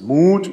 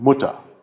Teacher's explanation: das lange u ist Mut das kurze ist in Mutter